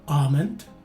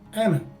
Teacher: in the first variation the letter a is a stretched out a as indicated by the macron sign whereas it's a short a in the second variation